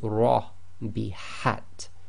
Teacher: fat it will be pronounced as IE heavy full mouth I lifting up the posterior of the tongue making your mouth more full the lips go slightly round